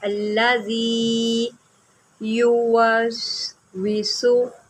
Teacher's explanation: زال ہے، اس کو زی نہیں پڑھنا